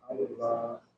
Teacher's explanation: Di sini di atasnya itu ada lafzul jalalah. Ketika waqaf maka kata terakhir berupa lafaz Allah ini waqaf dibaca dengan mat dan sukun. Jadi dipanjangkan lamnya.